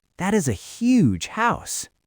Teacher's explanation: If I see a beautiful house, I do not just say that is a huge house on a flat tone. I jump my pitch on the word huge. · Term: pitch jump